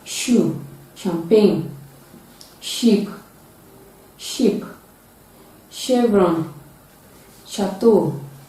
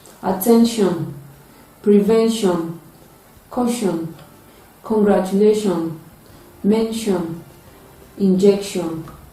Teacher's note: It is produced with partial obstruction, and it is paired with ch. It is a voiceless sound, and it is produced when the tip of the tongue is touching the alveolar ridge and the middle of the tongue is raised to the hard palate. Its spellings include CH, S, SH, and T. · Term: voiceless palato-alveolar fricative sound